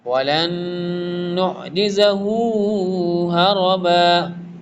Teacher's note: پہلا نون ساکن ہے اور اس کے بعد والا متحرک ہے تو ادغام ہوگا